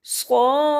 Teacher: صاد حروف مستعلیہ میں سے ہے، موٹا پڑھیں گے اور مد کو 5 الف کے برابر لمبا کریں گے